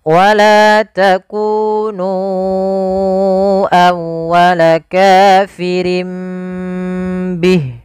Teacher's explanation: Kemudian langkah selanjutnya untuk iqlab, ditahan suara m-nya sepanjang 2 harakat untuk menyempurnakan gunnahnya